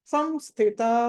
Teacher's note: సం అంటే మా పలకూడదు, ముక్కుతోటి సం అని మనం మామూలుగా నోరు మూసుకుని అనాలంటే ఎలా అంట అంటాం కదా, అలా సంస్థిత.